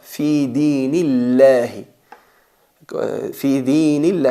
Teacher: Eso quiere decir que la que nos queda, que es kasra, es la relacionada con la atenuación. Cuando la palabra Allah está precedida de una letra vocalizada con kasra, hay que pronunciar la lam atenuada.